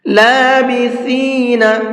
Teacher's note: لابثین، یہاں پر یہ سا ہے، اور سا کا پروننسیشن یہ ہے کہ اس کو سافٹ کر کے پڑھا جاتا ہے بہت زیادہ، اس کے اندر سیٹی نہیں ہوتی ہے